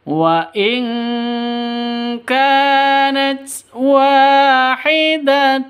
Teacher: Wa panjang dua ketukan. Karena ada alif diawali dengan fathah mad asli atau mad thi.